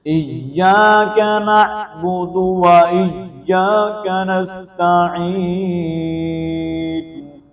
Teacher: اس طرح نستعین یہاں پر سین کو بریک کرتے ہوئے یا ساکن ما قبل زیر ہے، کسرہ ہونے کی وجہ سے عین کو یہاں پر یا مدہ ہے تو یا مدہ کو ہم ایک الف کے مطابق لمبا کر کے پڑھیں گے